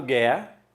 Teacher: o u não é pronunciado não é Gu erra então aqui existe um dígrafo e depois